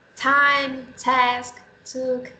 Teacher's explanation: there is a burst of air that we don't have in Portuguese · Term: aspiration